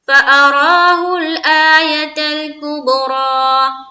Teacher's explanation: دھیان رہے اس لائن میں دو را ہے، دونوں کو پر رکھنا ہے. اس کے اوپر کھڑا زبر ہے، یہ بھی پر ہوگا اور یہ را بھی پر ہوگا.